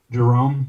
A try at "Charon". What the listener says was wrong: No, CH. Charon.